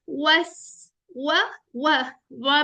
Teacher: होंठ पूरे गोल होंगे, कंप्लीट राउंडिंग